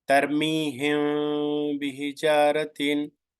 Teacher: Here I bring the lips nearby each other, but I did not touch it because it is a ikhfa shafawi.